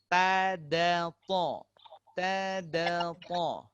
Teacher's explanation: Ini sama-sama dari huruf hujung lidah berjumpa dengan apa? Tempat tumbuhnya gigi kecil atas. Gigi seri atas.